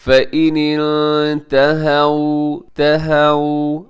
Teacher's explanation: یہاں پہ آپ نے اخفا کرنا ہے، آگے واو لین ہے اسے نرمی سے پڑھیے گا، اسے آپ نے مجہول نہیں پڑھنا